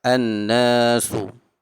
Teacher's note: Huruf alif yang tidak berbaris sebelumnya berbaris fathah. Jadi kita baca 2 harakat. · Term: mad asli mutlak